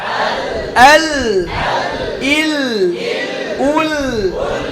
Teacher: লাম উচ্চারণের সময় জিহ্বার অগ্রভাগ সামনে চলে আসার ফলে আওয়াজ বাধাপ্রাপ্ত হয় এর ফলে জিহ্বার দুই পাশ থেকে আওয়াজ ঝুঁকে বের হয়ে যায় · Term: ইনহিরাফ